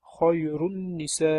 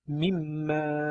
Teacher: sukunni nun nun yoki mim harflariga yo'liqqanda bu yerda g'unna bilan idg'om qilinadi